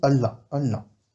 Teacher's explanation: si on a deux l qui se suivent on va faire un L appuyé